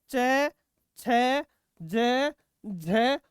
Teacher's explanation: स्पर्श करते हैं और स्पर्श करने के साथ साथ साथ में संघर्ष भी करते हैं स्पर्श संघर्षी